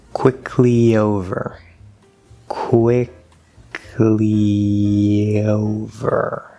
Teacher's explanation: it's the first vowel E, and that's going to connect with a small Y sound to O.